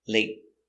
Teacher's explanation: Late is a stop T. When you have end with a T after a vowel, it's a stop T.